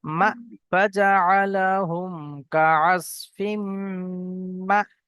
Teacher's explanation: হামজার উপরে সাকিন আসলে তখন একটু ঝাটকার সঙ্গে পড়তে হয়